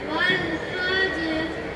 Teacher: நான் தான் வாவ். என்னுடைய பிறப்பிடம் இரு உதடுகளை குவித்து விரிக்கும் போது நான் உருவாகிறேன்.